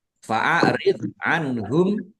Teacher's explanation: Mim sukun bertemu dengan huruf ha. Bacaan izhar syafawi dibaca jelas juga. Jadi kalau nun sukun itu izhar atau biasa disebut dengan izhar khalqi.